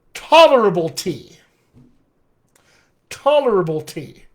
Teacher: ta and tea now become my stressed syllables